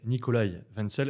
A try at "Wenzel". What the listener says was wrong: Je le prononce généralement en américaine, Wenzel, avec le W un peu plus suave.